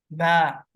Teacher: आपके होंठों के वेट part से अदा हो रहा है